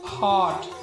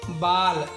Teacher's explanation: इनमें कुछ शब्दों में प्रयुक्त होने वाला ध्वनि हिंदी में भिन्न है। यह ध्वनि आ तथा ओ के बीच की है